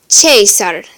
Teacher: In ecclesiastical, it'll be pronounced Caesar, so it'll make a ch sound instead of the hard k in classical